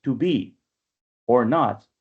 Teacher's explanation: a repeating series of unstressed, stressed, unstressed, stressed, and so forth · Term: iamb